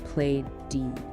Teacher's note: Play ends in a vowel sound which is voiced.